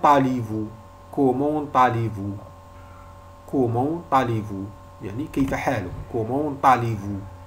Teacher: On a fait la liaison entre T et A.